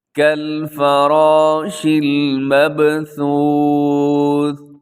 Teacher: یہاں را موٹا پڑا جائے گا، ساتھ الف ہے، الف بھی موٹی پڑی جائے گی کیونکہ الف سے پہلے موٹا حرف ہو تو الف موٹا پڑی جاتی ہے۔